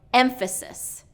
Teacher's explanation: emphasis so it should be he's doing second syllable stress and it should be first syllable stress